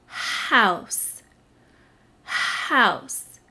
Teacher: how my mouth is open wide when i say it and i feel a little breath come out when i make the sound for house and my belly moves a little bit too i want you